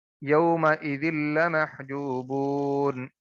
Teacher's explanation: لام کو ادا کرتے ہوئے آواز ناک میں جاتی نہیں ہے، اور آواز ناک میں جائے گی تو غنہ ہوگا، آواز ناک میں جب تک نہیں جائے گی غنہ نہیں ہوگا، تو یہاں پہ غنہ ہوگا ادغام بالغنہ، نہیں، ادغام بلا غنہ، یومئذ لمحجوبون۔